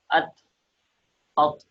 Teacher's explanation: Number ایک، اس کو موٹا نہیں پڑھا جاتا، جس کی وجہ سے تا اور طا دونوں ایک جیسے نکلتے ہیں، لہذا تا اور طا میں پہلا فرق تو یہی ہے کہ تا باریک پڑھا جائے گا اور طا موٹا پڑھا جائے گا، اور نکالنے کا طریقہ اس کا یہ ہے کہ زبان کی نوک اوپر کے دانتوں کی جڑ میں لگے، ات ات، اور موٹا نکالنے کا طریقہ یہ ہے کہ زبان کو اوپر تالو کی طرف اٹھا دیا جائے، ات۔